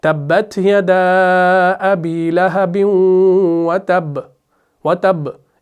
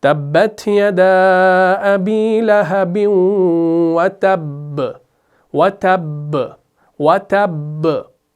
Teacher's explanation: तो कुछ लोग क्या करते हैं, मैंने अक्सर देखा है, कुछ लोग जब सूरह लहब की पहली आयत पढ़ते हैं ना नमाजों के अंदर भी, तब्बत यदा अबी लहबिन व तब, व तब, इस तरीके से, ये सही नहीं है। बा के ऊपर जब शद है तो बा की शद को मुकम्मल अदा करना है, फिर वक्फ करना है। तो ये पढ़ा जाएगा तब्बत यदा अबी लहबिन व तब, व तब, व तब, ठीक है।